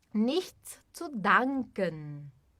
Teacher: E o Z tem som de TS.